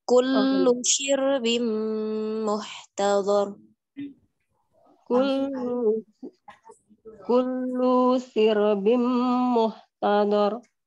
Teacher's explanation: kullunya jangan dilamakan Ibu ya, tidak ada huruf mad